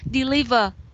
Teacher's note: zoom you say deliver deliver not deliver deliver yeah the sentence the stress is on the second syllable · the stress is on the second syllable. We say deliver, right?